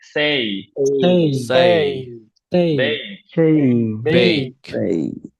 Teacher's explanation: আমরা কখনো সে, প্লে, নেম, দে, গেট, লেট, বেক এ বলবো না, এগুলো সব এই হবে